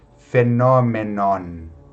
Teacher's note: aqui acaba com N, então eu não fecho a boca totalmente para pronunciar esse N, né? Fenômenon.